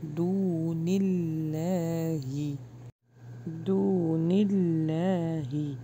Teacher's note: لا ہی نہیں پڑھیں گے، یعنی موٹا نہیں کریں گے، باریک رکھیں گے. دون اللہ دون اللہ باریک پڑھیں گے، اللہ کے نام کو ہیوی نہیں کریں گے